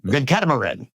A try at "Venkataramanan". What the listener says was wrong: Venkataramanan. There's one syllable less. But what you said was actually a common name. It's just that mine has one extra syllable.